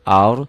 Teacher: rohnya dibaca tebal karena sebelum roh mati baris di atas